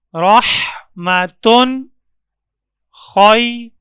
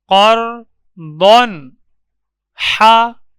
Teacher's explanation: تو تنوین کے پڑھنے میں جو نون آتا ہے اس نون کو ظاہر کر کے پڑھیں گے۔ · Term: اظہار